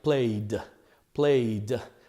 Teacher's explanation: If you hear the last sound on the verb play, if you put these three fingers on your throat, it's E. You could feel the vibration in your throat. Therefore, the correct pronunciation for this ED will be D. So the verb sounds like played, played. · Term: D sound